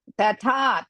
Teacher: First tha hrisva. Second tha dirgha and mahaprana.